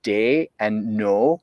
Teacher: many German speakers of English will have a monophthong in the O or the A, as in the word for day and the word for no.